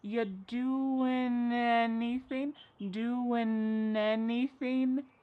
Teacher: We link together doing because we're going to drop the g. It ends with the sound n the n sound. · And then the next word, anything, we sometimes drop the A and we're going to push those two together because there's two N sounds side by side